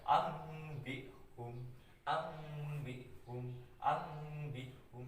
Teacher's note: Jadi nun matinya dibaca seperti mim mati ya, itu iklab.